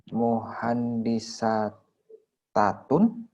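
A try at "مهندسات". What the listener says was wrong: dibuang dulu, Pak. Tamar butonya buang dulu.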